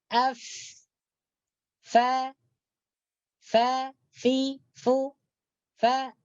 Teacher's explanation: dalam tekak kita ni, dalam halqum kita ni tidak ada getaran.